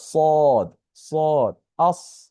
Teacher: তবে সদ আর সিনের মাঝে পার্থক্য হচ্ছে সদ একটু মোটা, একটু মোটা করে উচ্চারণ হয়, এটা সাউন্ডটা একটু মোটা।